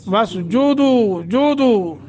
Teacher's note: वसजुदू, जुदू करके पढ़ेंगे, वसजदू नहीं पढ़ना, वसजुदू, जुदू। दू हरूफ मद्दा है, एक सेकंड की मद